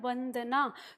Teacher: हमारा व, इसका उच्चारण स्थान है दंतोष्ठ। दंतोष्ठ का मतलब है ऊपर के दांत और नीचे का होठ। नीचे का होठ राउंड होता है ऊपर के दांत के नीचे जब हम बोलते हैं व।